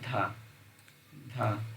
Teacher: जिनका उच्चारण ऊपर के दांतों पर जीभ लगाने से होता है उसे कहते हैं, उसे दंत कहते हैं। जिसमें दांत का प्रयोग होता है उसमें दंत कहते हैं। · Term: दंत ध्वनि